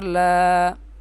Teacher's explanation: اس لام کو ایک الف کی مقدار کھینچ کر پڑھیں گے کیونکہ اس کے اوپر کھڑی زبر ہے